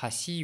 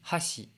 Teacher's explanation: C'est deux mots qui ont les mêmes kanas, simplement il y en a un avec une intonation montante, l'autre intonation descendante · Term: pitch accent